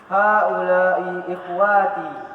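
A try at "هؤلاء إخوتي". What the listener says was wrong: Pendek, kayak ikhwati. Panjang pendeknya juga perhatikan. Pelan. Ikhwati. Wow-nya pendek. Haula'i ikhwati. Haula'i seperti haula'i.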